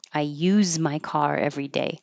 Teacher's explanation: it looks like an S, but it sounds like a Z